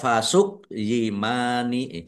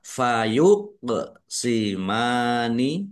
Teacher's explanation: Kolkolah ya. Kof sukun dibaca memantul. Ditampakkan pantulannya.